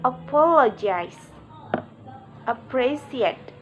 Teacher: Primary stress is on the second syllable and secondary stress on the fourth syllable. All other syllables are unstressed. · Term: Stress pattern 4